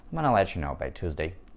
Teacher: Если вы говорите очень быстро, звук г горловой может выпасть